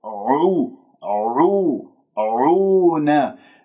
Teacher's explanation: والعين مضمومة أضم الشفاه أبينها، والعين عميقة منين؟ من وسط الحلق